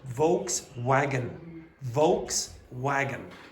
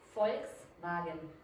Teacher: And you hear the wagon becomes v.